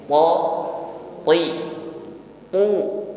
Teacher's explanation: baik W dihimpun bibir ke depan wa sehingga tipis bunyi Hurufnya huruf th di sini sifatnya syiddah jadi kuat dalam menekan hurufnya selain sidah dia juga jahar ya ini Jar nafasi tertahan aliran · nafasi tertahan aliran nafas ketika mengucapkannya th th th ya jadi jangan ucapkan th dengan ada aliran nafas